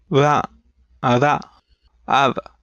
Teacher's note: a flap, which is made like something halfway between a trill and a plosive. It's really quick, with no buildup of air, and if you make a few in a row, it sounds like a vibration.